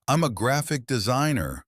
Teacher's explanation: Now at a natural speed, make the words graphic and designer loud. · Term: sentence stress